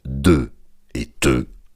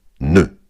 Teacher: C'est au tour des occlusives dentales de et te, remplacer par la nasale ne.